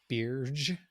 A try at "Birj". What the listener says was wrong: I, I I think the J is silent.